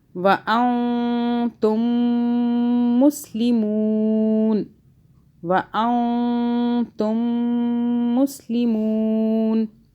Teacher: یہ دونوں میم آپس میں کیا ہو رہے ہیں؟ مدغم ہو رہے ہیں. ٹھیک ہے، آپس میں ایک ہو رہے ہیں کیونکہ 2 میم ہے نا.